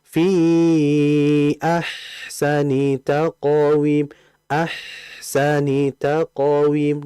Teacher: H ini merupakan huruf yang sifatnya rakhawah atau rikhawah. Mengalir disertai dengan desisan.